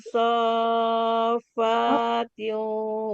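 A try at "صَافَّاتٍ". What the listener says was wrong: Enggak panjang, Fanya. Enggak panjang, Pak. Sofatin. Panjang.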